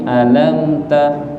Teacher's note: mim ketemu ta, namanya idhar syafawi, enggak boleh ditahan